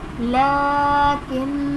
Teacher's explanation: لام پر کھڑا زبر ہے جو کہ الف مدہ کے قائم مقام ہے، ایک الف یعنی 2 حرکات کے برابر کھینچ کر پڑھیں گے۔ نون مشدد ہے، یہاں پر ہم غنہ کریں گے، اور وقف کی صورت میں اسے پڑھیں گے تو یہ لیکن الف مدہ بن جائے گا، یہ زائد الف نہیں ہوگا۔